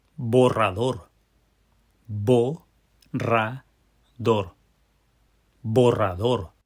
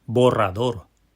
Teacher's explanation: It's got those three syllables, but they're a little bit more complicated. We're working with that double R. We're going to have to roll that R.